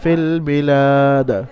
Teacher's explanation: আর এক আলিফের জায়গায় এখানে 3 থেকে 4 আলিফ পরিমাণ টান দিয়ে লামকে পড়তে হবে, কারণ আলিফ মাদ্দা খারা জাবার আলিফ মাদ্দা সমতুল্য, সুতরাং আলিফ মাদ্দা ধরে নিয়ে ওটাকে খারা জাবারকে কি করতে হবে 3 থেকে 4 আলিফ পরিমাণ টান দিয়ে পড়তে হবে, এবং দালের উপরে তারপরে ওয়াকফ করতে হবে 3 থেকে 4 আলিফ টানার পরে। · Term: আরিজ ওয়াকফির কায়দা